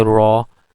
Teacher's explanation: And when we say raw, so in raw, the position of ra is actually alveolar ridge, or just behind the alveolar ridge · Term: approximant